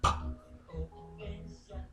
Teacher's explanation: P, the P says P, voiceless, made with the lips.